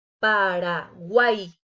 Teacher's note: Aquí se forma otro triptongo y como dijimos anteriormente, debe de quedar junta en una sola sílaba. Paraguay. El oído también me lo dice.